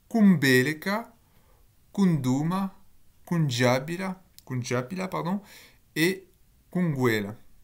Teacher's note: Donc on a une nasale qui est apparue, mais cette nasale, elle change de forme. Elle n'a pas tout le temps la même forme.